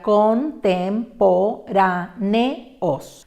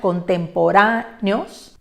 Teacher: Observen al final que hay un encuentro de vocal fuerte y fuerte que no hace diptongo